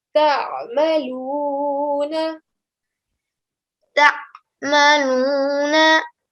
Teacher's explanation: the sound of the ayn comes from the middle of the throat